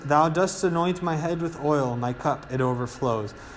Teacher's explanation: so not only are they following a certain meter which is iambic because it's one unstressed and one stressed so a two syllable pattern with four feet